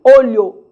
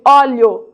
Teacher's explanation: eu vou pensar em olho, timbre fechou, diferente de óleo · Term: timbre fechado